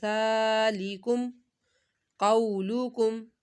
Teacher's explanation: صرف زال کو ہم نے ایک الف کے برابر کھینچ کر پڑھا